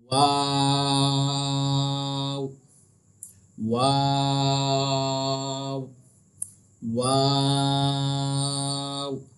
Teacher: जब हम वाव कहते हैं तो इसका जो मखरज है वो ये है, दोनों होठों को गोल करके अदा किया जाता है। जब आप वाव कहोगे ना तो आपके दोनों जो होठ है ना वो गोल हो जाएंगे।